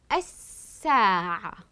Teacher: تحتوي هذه الكلمه على لام شمسيه كتبت ولكن لم اقوم بنطقها